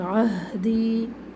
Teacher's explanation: ہا رگڑ کھاتی سانس کے ساتھ باہر آواز آئے گی